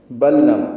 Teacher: لام ساکن کے بعد پھر لام آیا، اس لیے دونوں لاموں کا ادغام ہو رہا ہے، ادغام مثلین کہتے ہیں اس کو.